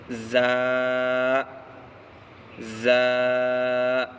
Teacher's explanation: زا کا مخرج زبان کی نوک اور سامنے 2 دانتوں کے کنارے سے زا ادا ہوتا ہے